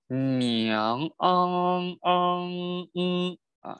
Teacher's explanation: 昂尾音要收到昂，要收到这个后鼻音鼻腔里，鼻腔音里。